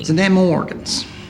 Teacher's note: shifts the entire quality of his voice into a more nasal place.